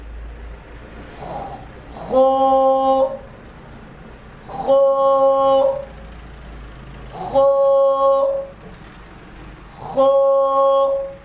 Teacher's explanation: اس کا مخرج ہے حلق کا شروع جو منہ کی طرف ہے · اس کو ہم نے موٹا پڑھنا ہے اور ایک الف کی مقدار کھینچیں گے، اور ایسا پڑھیں کہ مجہول نہ ہونے پائے۔